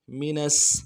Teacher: نون کو سین کے ساتھ ملانا ہے، سین کے اوپر تشدید ہے